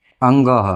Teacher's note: और अंग के दो उच्चारण स्थान कौन कौन से हो गए, एक तो कै वर्ग के साथ कंठ और दूसरा नासिका